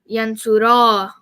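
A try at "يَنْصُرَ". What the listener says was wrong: The A should be even shorter than what you did. So do it again.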